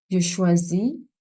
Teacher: Je choisis is Z sound because it's a single S found in between vowels. So it's pronounced as a Z sound.